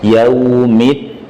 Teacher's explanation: Nggak ada angin dalam huruf dal. Yaumid, disenyumkan i.